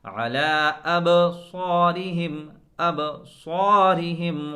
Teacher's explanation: با کی صفت یہ ہے کہ با کے اندر قلقلہ ہوتا ہے، آواز لوٹ کر آتی ہے۔